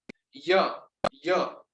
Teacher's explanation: य वो है तालु ध्वनि, मतलब तालु से उसकी ध्वनि निकलती है